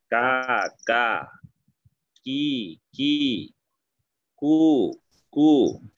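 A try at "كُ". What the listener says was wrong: ওই কাফে পেশ বলার সময় আমি যেভাবে আওয়াজটা শুনলাম আমার কাছে মনে হইতেছে চাপটা আর একটু দেওয়া যেতে পারে। কু কু কু কু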